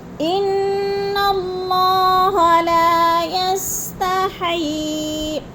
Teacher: لا کو تھوڑا سا کھینچنا ہے، الف مدہ ہے